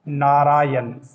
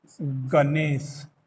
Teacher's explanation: ण मूर्धन्य जो ध्वनि है, ण का न के रूप में प्रयोग होता है